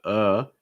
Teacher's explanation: that's your schwa again your mouth is super relaxed raising just slightly the front of your tongue and your mouth is mostly closed